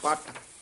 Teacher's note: ਜਿਆਦਾ ਕਸ ਕੇ ਨਹੀਂ ਪੱਟ ਨਹੀਂ ਕਹਿਣਾ ਦਰਮਿਆਨਾ ਜਿਹਾ ਬੋਲਣਾ